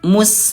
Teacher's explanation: Jadi Bunda, huruf sod dia tetap dibaca tebal walaupun kasroh ya, sli. Dan huruf sin dia tetap tipis walaupun dhammah atau sukun dhammah